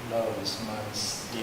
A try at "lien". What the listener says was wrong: It has the French pronunciation.